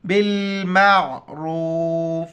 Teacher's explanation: یہاں پر را کے اوپر پیش ہے تو را کو موٹا کر کے پڑھیں گے، با کو لام کے ساتھ ملائیں گے، عین کو گلے سے ادا کریں گے.